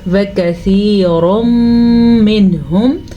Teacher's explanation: را کے اوپر 2 پیش ہیں تو را کو ہم پر پڑھیں گے. البتہ یہاں پہ ادغام بالغنہ کا قاعدہ ہو رہا ہے.